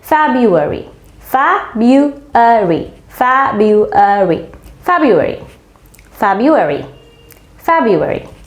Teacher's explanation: প্রথম আরটা কিন্তু উচ্চারণ হচ্ছে না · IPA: ˈfɛbjʊəri